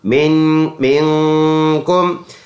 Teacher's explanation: میم نون زیر مین آواز ناک میں لے کے جائیں گے